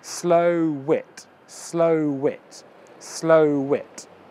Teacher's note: the W moves to the it